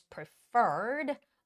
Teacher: the stress goes on the second e